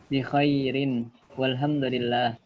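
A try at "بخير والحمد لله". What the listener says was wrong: Masya Allah, mumtaz.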